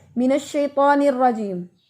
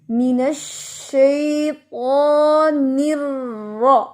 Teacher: پہلی آواز ہے نر، دوسری آواز ہے را. ٹھیک ہے، پہلی آواز جوائننگ کی نر، دوسری حرکت کی را